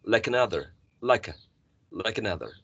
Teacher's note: So in this case, like, even though the spelling is L-I-K-E, E is silent. So basically we are connecting the last sound k with the following sound schwa. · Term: linking